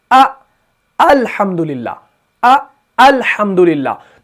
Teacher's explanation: और इसकी अदायगी कहां से है? हलक के निचले वाले हिस्से से। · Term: हमजा